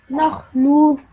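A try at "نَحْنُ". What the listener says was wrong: Don't stretch this sound right at the end because the noon simply has a dhamma. So, nahnu.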